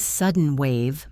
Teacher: In the phrase sudden wave, my voice goes up on wave.